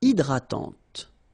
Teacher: Okay, don't insist on the final E, and this is nasal. Hydratante.